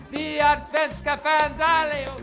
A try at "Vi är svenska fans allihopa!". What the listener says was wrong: This usually happens when other people try to speak Swedish. They speak very hard, very harsh. So it almost sounds like German.